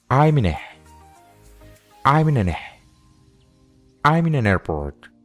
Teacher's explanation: Ahora volvemos a ver que la palabra an termina con un sonido consonante, seguido de la vocal A de la palabra airport. O sea que la N de la palabra an ahora le pertenece a la palabra airport. Y en vez de pronunciar airport, diríamos nearport.